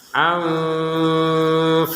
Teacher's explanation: Ada nun sukun di sini bertemu fa, kita baca dengan samar